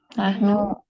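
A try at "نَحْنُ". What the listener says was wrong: Lah, nahnu naknya panjang. Nahnu domirnya, nunnya adalah dipanjangkan. Ya, perbedaan zahabna dengan zahabna itu berbeda. Nah, ini panjang adalah nahnu. Ya, beda halnya ketika nunnya itu tidak panjang.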